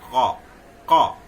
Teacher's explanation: ये अघोष है, अल्पप्राण क